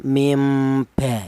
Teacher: huruf nun ini diganti dengan huruf mim, itu hanya cara bacaannya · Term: iklab